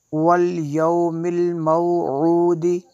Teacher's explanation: اس کو یہاں پہ وقف کریں گے، والیوم الموعود، والیوم الموعود، دال بھی قلقلہ ہونا چاہیے